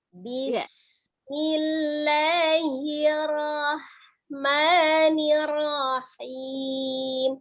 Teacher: Hati-hati, sinnya ngalir ya, tidak dipantulkan, bukan bismi